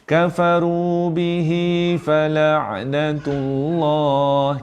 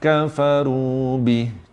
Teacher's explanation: Ya kecil, waw kecil kalau berhenti tak berfungsi. Hanya berfungsi 2 harakat bila bersambung saja.